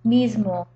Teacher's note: the voice consonant M makes that s voiced as well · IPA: [miz.mo]